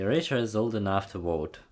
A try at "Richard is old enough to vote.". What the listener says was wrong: Absolutely.